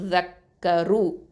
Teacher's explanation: ரு வந்து ஹெவியா உச்சரிக்கணும் தஃப்ஹீமா உச்சரிக்கணும்